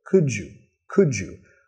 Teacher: Vamos a vincular acá, could you, con un sonido j